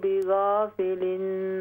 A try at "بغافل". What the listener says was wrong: بغا، غین کے ساتھ الف کو بھی موٹا کیجئے،